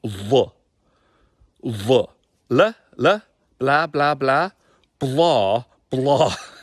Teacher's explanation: we have a different L sound because it's not the English L sound. It's a thicker Gaelic L sound.